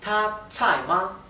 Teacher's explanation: el tono alto t con el tono que cae T y ma es neutro por eso no tiene tono